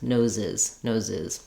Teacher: And when we make nose plural, if we're talking about several people's noses, then we have to add a full syllable. So to make nose plural, we add the I sound and another Z sound. So this happens because when a word already ends with a S or a Z, an S or a Z sound, we can't just add another.